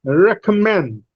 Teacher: But out of re and ka, Ray receives greater breath force than K. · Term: secondary stress